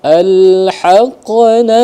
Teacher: Qa itu ketika dia sukun dia menjadi qalqalah sugra ya.